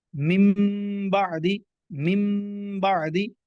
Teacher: نون ساکن کے بعد اگر حرف با آ جائے تو اقلاب ہوگا، یعنی غنہ کر کے پڑھیں گے اور نون کو میم سے بدل دیں گے، نون کو میم سے بدل دیں گے.